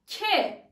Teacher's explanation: damak ve dil birbirine çarpıyor